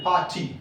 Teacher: Par should be intonated. This part is called stress.